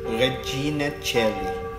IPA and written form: reˈdʒina ˈtʃeli (Regina caeli)